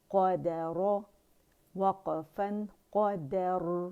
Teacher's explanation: اس کی را ساکن سے پہلے ہمارے پاس فتح آ رہی ہے تو موٹائی سے ہی پڑھیں گے